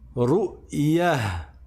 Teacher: Le ta marbouta se transforme en ha.